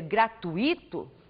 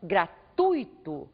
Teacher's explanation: faça a sílaba mais forte ser a penúltima sílaba desta palavra